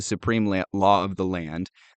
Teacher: He put particular stress on the second syllable of supreme